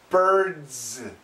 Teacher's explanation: Now, birds, it's a very heavy, it's like a DZ. The sounds go together, but the D is weak.